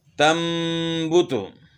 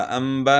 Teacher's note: نون جو ہے میم سے بدل چکا ہے، اسی کو اقلاب کہتے ہیں